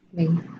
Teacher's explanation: Ley es un diptongo. Se mantiene unido el sonido porque la I no tiene intensidad.